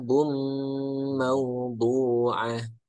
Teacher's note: Bum ditahan sedikit, ada idgham di gunnah